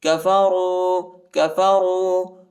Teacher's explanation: راو پیش رو، را کو موٹا پڑھیں گے،